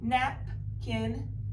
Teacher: We have vowel, consonant, consonant, vowel, and we split this between the vowels. Napkin, the accent is on the first syllable.